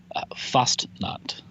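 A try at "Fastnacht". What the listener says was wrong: It's not that bad. You said fast instead of Fost. That's not that grating to the ears. That seems a little drastic.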